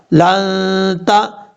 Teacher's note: یہاں پر غنہ ہوگا اخفا کا، ایک الف کی مقدار غنہ کریں گے اور میم کو سین سے ملائیں گے.